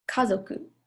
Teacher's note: type one which for sure is high low low · which for sure is high low low so like Kazoku so you can kind of hear like the stress on the first mora